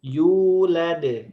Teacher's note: U-nya panjang, Walam la-nya pendek.